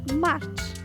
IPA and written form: mɑrtʃ (March)